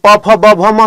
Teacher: प वर्ग प म इसका उच्चारण स्थान ओष्ठ यानी ओठ होता है